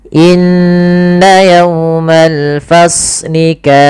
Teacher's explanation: cukup saja dua harakat dengan menaikkan sedikit suaranya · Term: Mad thaabiinya